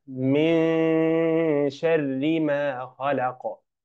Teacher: النون ساكنه وجاء بعدها حرف الشين فهذا يسمى اخفاء حقيقيا فنخ النون في حرف الشين عند حرف الشين ا مع غنه